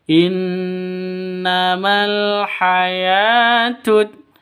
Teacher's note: Mal awalnya Ma panjang Karena bertemu dengan alif